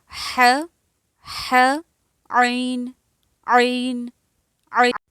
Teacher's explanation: وسطی حلق یعنی حلق کے وسط سے، درمیان والے حصے سے